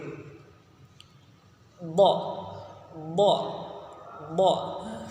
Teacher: Penyebutan huruf bo ini lidahnya nempel dulu dengan gigi geraham atas kanan atau kiri